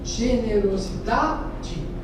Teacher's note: em generosidade, a sílaba forte é a penúltima